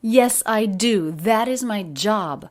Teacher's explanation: quite a bit of stress here yes i do that is my job two peaks in each of those sentences yes i do uh but the pitch change is very smooth